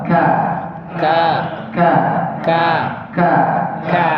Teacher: Yang berpengaruh itu pokoknya ketika mengucapkan ikhfa ini, kita sudah berada di posisi persiapan pengucapan huruf kaf. Yang mana pengucapan huruf kaf itu menempelkan pangkal lidah ke langit-langit antara langit-langit lunak dan keras ya